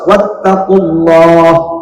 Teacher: Sebelumnya ada huruf qaf yang berbaris dhamma, maka dibaca tafkhim, tebal, ya.